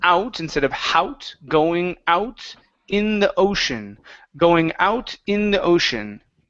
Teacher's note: you added an H to out and an H on Ocean